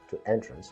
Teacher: To entrance with the accent of the second syllable is a verb meaning to delight.